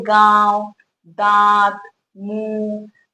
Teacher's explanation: जैसे कि हम कह सकते हैं गांव, दांत, मुंह, दोनों का जब भी उच्चारण कर रहे हैं हम यहाँ, तो पा रहे हैं कि जो हवा है वो नाक और मुंह दोनों से ही निकल रही है, दोनों की सहायता लग रही है उच्चारण करने में। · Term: अनुनासिक